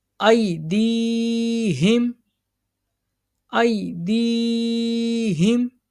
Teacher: یا ساکن سے پہلے زیر ہے نا، یا مد، اس کو بھی ایک انگلی کی مقدار کے برابر کھینچ کے پڑھیں گے